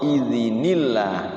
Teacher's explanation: Jadi hilang tanwinnya, timbul nun kecil. Itu pelajaran nun wiqayah ya.